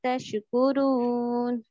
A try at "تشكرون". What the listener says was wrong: تشكرون تشکر کے پڑھیں گی تو وہ ظاہر ہو جائے گا قلقلہ ہو جائے گا قلقلہ نہیں کرنا تشکرون